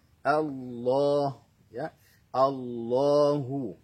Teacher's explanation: berikan penekanan atau nabroh kepada huruf lam